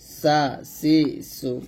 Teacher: সিন, ইংরেজিতে সি এর মতো চিকন আওয়াজে পড়তে হবে, আর জিহ্বাটা নিচে যাতে মাঝে লাগবে, যার মতো হয়। জিহ্বার আগার সামনে নিচে দুই দাঁতের পেট আগার সঙ্গে লাগিয়ে সিনটা পাতলা উচ্চারণ করতে হবে।